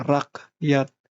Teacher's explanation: celah antara kedua pita suara tertutup rapat akan menghasilkan bunyi hamzah, yaitu K yang disentakkan seperti pada rakyat